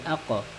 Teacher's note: قاف کے اوپر جزم آیا ہے، اس کو ہم ہلکا سا جھٹکا دے کے پڑھیں گے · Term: قلقلہ